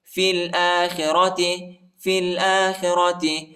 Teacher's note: فا کو لام کے ساتھ ملائیں گے، یا اور الف نہیں پڑھا جاتا، یا اور الف پر حرکت نہیں ہے